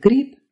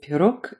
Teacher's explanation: So the b at the end of grip is pronounced p, and the g at the end of pirog is pronounced k. They're unvoiced.